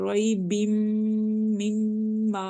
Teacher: second والی میم کے آگے الف مدہ ہے، اس سے ہم ان کو ون فنگر اسٹریچ کر رہے ہیں میم کو